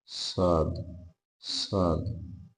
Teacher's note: দেখলেই অক্ষর শ্রেণী যাবে তিন মাথার উপরে তিন নুক্তা সেই সদ সদটা ইস্তেলার অক্ষর মোটা হবে জবরের আকারে সরব হবে সদ সদ দ এই সদের মত একই